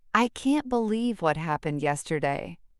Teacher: The word believe becomes flatter, more monotone and yesterday drops with resignation.